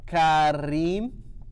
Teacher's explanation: she throws in that rolled R and hits a little bit of an H high note in there